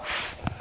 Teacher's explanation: And the description is known as the voiceless labiodental fricative. That is labiodental.